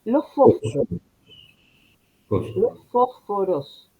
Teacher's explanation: la S dentro de la palabra es como que desaparece absorbida por una especie de aspiración